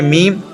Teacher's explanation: दोनों होठों के खुश्क यानी सूखे हिस्से से अदा होता है